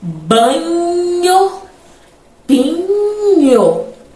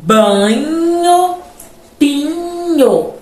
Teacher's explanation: Ó esse NH esse sonzinho NH que inclusive é um dígrafo ele vai ser chamado então de oclusiva palatal porque a gente usa ali ó o dorso da língua e o palato